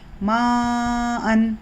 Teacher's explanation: مد اصلی کے بعد حمزہ اگر آتا ہے اپنے اصلی شکل میں تو یہاں پر مدہ بنتا ہے، تو یہاں پر ہم کو 4 سے 5 حرکت کھینچنا ہے